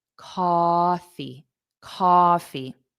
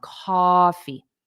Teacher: the syllable stress is on the first sound